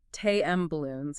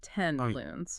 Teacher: You make it with both lips. So your mouth in its efficient laziness just changes the N to an M to get ready. M is also bilabial. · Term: assimilation